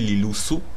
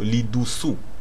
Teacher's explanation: Le L est devenu un D dans le deuxième mot.